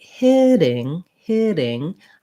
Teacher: i'm going up to the same spot with my tongue where i make that t and d sound my voice is on but it's light and i'm not building up a lot of pressure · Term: flap